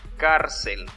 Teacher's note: su sílaba tónica es la penúltima